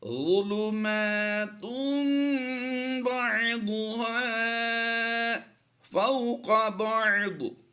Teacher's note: ضاد کی ادائیگی ہم نے پر کرنی ہے، یہ حروف مستعلیہ سے ہے